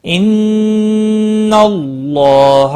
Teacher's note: ان نون مشدد پر غنہ ہوگا. اللہ کا لام پور پڑا جائے گا زبر کی وجہ سے، اس کے اوپر کھڑی زبر بھی ہے، ایک الف کے برابر کھینچ کر پڑھیں گے.